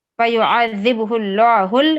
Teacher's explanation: چونکہ لفظ اللہ سے پہلے پیش آیا ہے تو ہم اسے موٹا پڑھیں گے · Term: تغلیظ